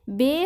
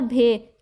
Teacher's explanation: بے کے تلفظ میں ہوا کے جھونکے میں اضافہ نہیں کیا جاتا ہے، جبکہ بھے کے تلفظ میں جو ہوتا ہے وہ ہوا کے جھونکے میں اضافہ کیا جاتا ہے